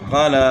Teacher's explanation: کھینچیں گے. قاف زبر قا، لام کھڑا زبر لا، قالا. تو یہاں قاف کو نہیں کھینچنا، لام کو کھینچنا کیونکہ لام کے اوپر کھڑا زبر ہے